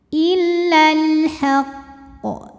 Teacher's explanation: illal illal kemudian Alif lamnya dinamakan dengan alif lam qari karena alif lam menghadapi huruf qamariah yaitu huruf ha maka lam sukun ini kita baca dengan jelas oleh karena itu alif lam qamariah biasa juga disebut dengan izhar · alif lam menghadapi huruf qomariyah yaitu huruf H. Maka lam sukun ini kita baca dengan jelas. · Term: izhar qamari, alif lam qomariyah